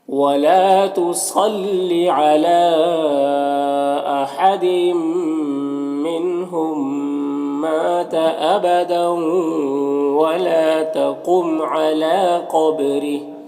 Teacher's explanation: قاف حروف مستعلیہ میں سے پر پڑھیں گے، با میں قلقلہ کریں گے اور را کے نیچے زیر اور را کو باریک پڑھیں گے۔ یہاں پر وقف کریں گے تو کھڑی زیر سکون سے بدل جائے گی، تو اس طرح سے پڑھیں گے۔